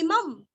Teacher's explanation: इमं अनुस्वार का उच्चारण आधा म